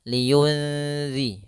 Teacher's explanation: langsung kepada makhraj huruf zal, yaitu pada ujung lidah menempel dengan gusi atas. Kemudian ditahan dengungannya. · tidak dimasukkan tapi disamarkan nunnya kepada huruf setelahnya maka di sini nunnya disamarkan ke Zal liunzi langsung kepada makhraj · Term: ikhfa